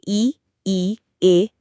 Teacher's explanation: अग्र स्वर जिनमें जीभ का आगे का हिस्सा काम करता है।